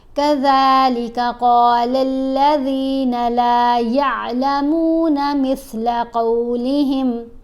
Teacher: ذال سا دونوں کو جب آپ ادا کریں تو آپ نے دھیان رکھنا ہے کہ زبان کو دانتوں کے درمیان میں رکھیں، پھر یہ آوازیں ٹھیک پیدا ہوتی ہیں